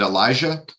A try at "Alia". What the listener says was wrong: Actually, the J is silent, so it's Alia.